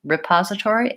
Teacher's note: The most important thing is to stress the second syllable pause and have that be long, and have your first syllable be short and unstressed. The most correct way to do it is repository, and to go use vowel I on that.